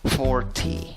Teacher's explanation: Divides la palabra en 2 sílabas. En la primera sílaba, que es la sílaba que lleva la fuerza de voz, la sílaba amarilla, la pronuncias con una O fuerte, O. Y acabas la palabra con una I larga.